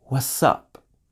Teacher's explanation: notice with what up the T sound disappeared completely